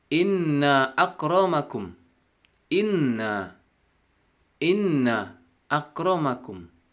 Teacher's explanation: Nunnya berwarna merah. Artinya dibaca gunnah. Berdengung 2 harakat.